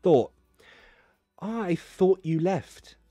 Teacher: and yes of course you can use the glottal t